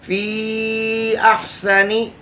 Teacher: صفت سفیر کا لحاظ کرتے ہوئے سیٹی کی سی یا چڑیا کی سی آواز کے سین کو ظاہر کرنا ہے